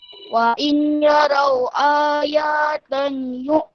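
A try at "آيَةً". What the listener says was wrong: Ayatain. Ayatain. Ya tak panjang. A yang panjang. Ayatain.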